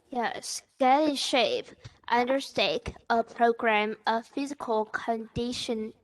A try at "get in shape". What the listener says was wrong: Very good, very good.